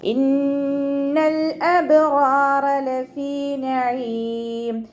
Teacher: ഇന്ന നൂന് ശബ്ദ അക്മൽ ഒന്ന നല്ലോണം മണിച്ചു കൊടുക്കുക. ലാമ് കൽക്കലയുടെ ലെറ്ററില്ലാത്തത് കൊണ്ട് ഹാഫ് സുക്കൂന് കൊടുക്കുക. അബ്റാറ ബ കൽക്കലയുടെ ലെറ്റർ ആയതുകൊണ്ട് ഫുൾ സുക്കൂന് കൊടുക്കുക കേട്ടോ. · റോ ഫതഹ് വന്നു ഉയർത്തി ഉച്ചരിച്ച് കൊടുക്കുക. റോയിൻ്റെ കൂടെ അലിഫ് മദ്ദും വന്നിട്ടുണ്ട്, 2 കൗണ്ട് നീട്ടിക്കൊടുക്കുക.